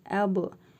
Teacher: Bu bə hərfidir. Üzərində cəzm var. Qalqalə edərək oxuyuruq.